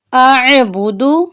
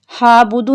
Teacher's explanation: حمزہ کو ہم عین کے ساتھ ملائیں گے، عین کے اوپر جزم ہے